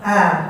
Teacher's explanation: A-nya Indonesia tidak ada istifal. A-nya orang Indonesia A lurus. A-nya orang Arab turun. A. Itu A-nya orang Arab.